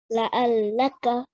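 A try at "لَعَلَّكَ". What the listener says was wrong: Try to read that ayn from the middle of your throat, okay?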